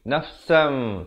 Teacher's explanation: tukarkan bunyi nun kepada bunyi mim, nafsam. Tetapi dengan kadar 2 harakat. Bibir dengan atas dengan bawah itu, dia sama ada hampir bersentuhan ataupun sekadar bersentuhan saja. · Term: hukum iqlab